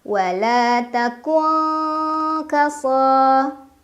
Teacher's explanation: Ada ikhfa ab'ad karena ada nun sukun yang bertemu dengan huruf kaf, dibaca nun sukunnya samar-samar ke kaf sambil berdengung.